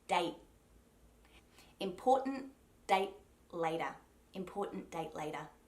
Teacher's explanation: When I close off the T on the word date, I use a silent T. So all I'm doing is placing my tongue where the T sound would usually go.